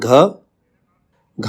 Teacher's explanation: घ का है सघोष महाप्राण